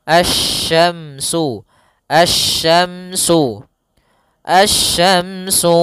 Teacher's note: langsung ke huruf syin makhrajnya dari tengah lidah kita